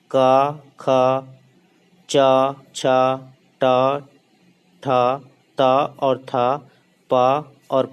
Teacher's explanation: लेकिन जो हमारा क, ख, च, छ, ट, ठ, त और थ, प और फ है, ये सब बोलने पे हमारे कंठ में कंपन उत्पन्न नहीं होती।